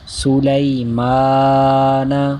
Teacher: حرف مدہ، کھڑی حرکات، ان کو بھی ایک الف یعنی دو حرکات کے برابر کھینچ کر پڑھیں گے